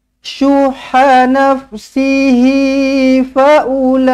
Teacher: mad wajib mutasil, baca dengan 4 ataupun 5 harakat.